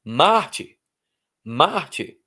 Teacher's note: A força está no mar, tá? Então é paroxítona e termina com R, se encaixa na regra.